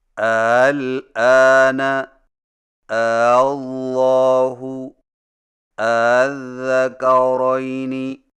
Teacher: دو حمزوں سے پڑھیں لیکن دوسرے حمزہ کو ذرا نرم پڑھیں، یعنی اس طرح الآن اللہ الذکرین، اس کو تسہیل کہتے ہیں۔